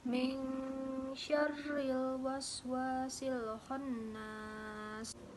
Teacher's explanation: menyamarkan nun atau tanwin menjadi seolah-olah dibaca eng